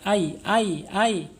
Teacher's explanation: napasnya tidak mengalir ya berarti dia mempunyai sifat aljahr ya tertahannya napas kita kemudian Isti apa namanya asyidah asyidah tertahan